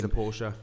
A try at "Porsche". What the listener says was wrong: The Porsche. It's not Porsche. It's Porsche. Porsche. It's not an A on the end, is there? There's no A on the end.